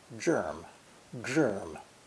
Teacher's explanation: the tone curves backwards as if to exaggerate the word germ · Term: third tone